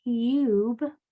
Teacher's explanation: In a word like cube, you're going to hear the whole U sound. Even though it's technically a diphthong, two sounds are blended together very quickly.